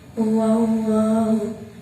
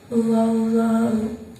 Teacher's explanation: Di situ ada lam jalalah didahului huruf yang berharokat fathah, maka cara bacanya tebal.